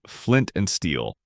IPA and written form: flɪnt ænd stiːl (Flint and Steel)